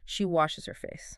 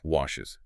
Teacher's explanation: So, English adds a whole vowel sound. We add e and s.